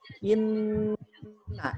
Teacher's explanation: ketika kita membaca nun bertasydid, maka yang harus kita lakukan adalah kita tahan dulu 3 harakat bunyi an-nya.